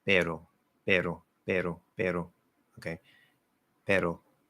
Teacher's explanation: my Spanish R, single tap R, is probably a flap D.